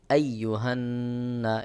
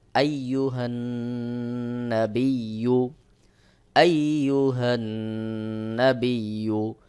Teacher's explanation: নুনের উপর তাসদিদ রয়েছে, অবশ্যই গুন্নাহ করতে হবে, এটাকে বলা হয় ওয়াজিব গুন্না।